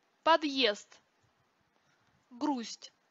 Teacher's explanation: если на конце слова оказываются два звонких согласных оглушаются они оба подъезд грусть оглушению не подвергаются только сонорные согласные р л м